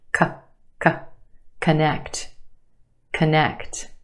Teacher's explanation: first syllable becomes the schwa